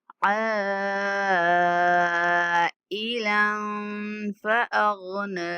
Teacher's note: عین کے اوپر جو مد ہے، اس کو 5 سیکنڈ تک لمبا کرنا ہے۔ اور ای عین اور حمزہ کے مخرج میں فرق کریں گے